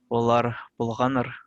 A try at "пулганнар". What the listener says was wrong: Пулган. Вот тут 2 Н. Надо пулганнар. Пулган. Нет. Н. 2 Н пишет. Пулганнар.